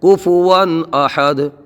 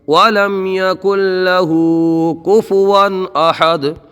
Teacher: ون میں اظہار ہوگا، اظہار میں گنہ نہیں ہوتا، ایسے نارمل پڑھتے ہیں